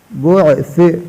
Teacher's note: قبور بعثرت، بعث، سا کو سے ادا کرنا، سا اس طرح ادا ہوتا ہے، زبان کی سر دو سامنے والے اوپر دانتوں کی سر سے لگا کر ادا ہوتا ہے